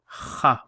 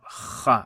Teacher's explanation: kha, like you're clearing phlegm, and that phlegm has come out.